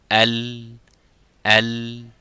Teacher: tongue and slightly the side also but when it stop stops by hitting the tip of the tongue into the roof of the mouth the air goes right and left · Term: lamb